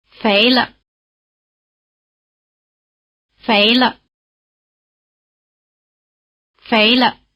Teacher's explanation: After the rising tone, the pitch of the neutral tone is in the middle. Again, listen for the drop, and try to imitate it.